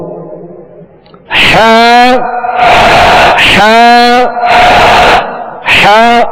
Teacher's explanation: ہا کا جو مخرج ہے وہ حلق کے درمیان والے حصے سے ہا ادا ہوتی ہے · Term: وسط حلق